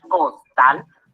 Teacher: de n s o vocal costal al separarle en sílabas costal nos damos cuenta que la sílaba tónica se encuentra en la última sílaba · nos damos cuenta que la sílaba tónica se encuentra en la última sílaba. Y aunque es aguda, su terminación es en L, lo que la hace que la palabra no lleve tilde o acento ortográfico.